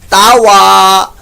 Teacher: واو ہونٹوں کی گلائی سے ادا کیجیے گا ، بعض لوگ ہونٹ گول نہیں کرتے اور فا کے مخرج